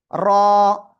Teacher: এক আলিফ টান হবে, মোটা আওয়াজে পড়তে হবে।